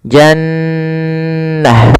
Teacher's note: Cara membacanya adalah suara nunnya ditahan dulu, ya. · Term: gunnah